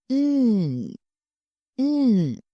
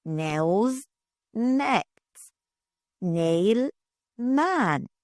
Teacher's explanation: say it softly through your nose.